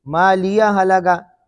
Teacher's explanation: اگر ملا کر پڑھیں گے تو ہا سکتہ حذف ہو جائے گی